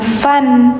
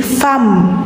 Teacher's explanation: Nah, bacanya jangan fan, karena setelahnya ada mim, jadi fam. Dimasukkan si suara N-nya ke mim, jadi suara N-nya kayak nggak ada.